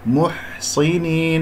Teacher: صاد مفخمة مرتبة أخيرة مكسورة